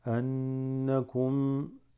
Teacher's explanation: Why are we holding the noon? Because it has a shadda and it's in ghunna.